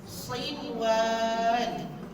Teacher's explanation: untuk huruf tebal ni, pangkal lidah kita mesti kita tinggikan. Bukan kita lekatkan kat langit. Pangkal lidah kita tu tinggikan.